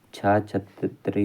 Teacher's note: तालव्य महाप्राण अघोष व्यंजन वर्ण का उदाहरण